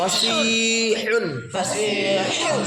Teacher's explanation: حلق سے نکالو درمیان حلق سے